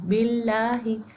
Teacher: باللہ میں لفظ اللہ سے پہلے زیر آ رہا ہے تو ہم اللہ کے دونوں لام کو لائٹ پڑھیں گے.